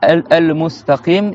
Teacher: le mot el-mustaqim, faut faire siffler le S